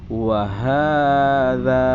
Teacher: Ha dan za panjang selama 2 harokat. Wahadza. Nah, di sini ada alif lam.